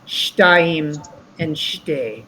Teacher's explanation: in fluent rapidly spoken Hebrew, the shva is a little less pronounced